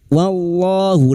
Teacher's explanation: lam jalalah yang didahului fathah dibaca tafkim